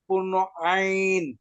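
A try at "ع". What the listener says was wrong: চাপ দেন আরো, পূর্ণ আইন।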